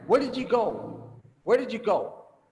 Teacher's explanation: so I make it rising because I wonder like how did this happen